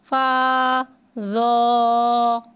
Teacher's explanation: زو حرف مستعلیہ ہے لہذا اس کی آواز حلق سے موٹی ادا ہوگی